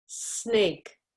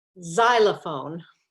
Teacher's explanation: We're doing the same position, but you can feel vibration. So the S is an unvoiced and the Z is a voiced sound.